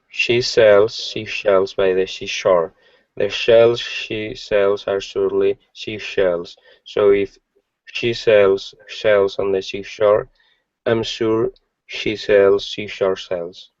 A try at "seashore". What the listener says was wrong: Okay, same issue here. I'm hearing she shells or she shore instead of seashore. Yeah, you're close. And what we're looking for is a bit more discipline here. So those of you that are having the same problem, let me show you what it looks like.